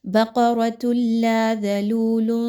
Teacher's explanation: تا کے اوپر 2 پیش کی تنوین ہے اور اس کے بعد لام کا حرف آ گیا تو ادغام ود آؤٹ غنہ کیجئے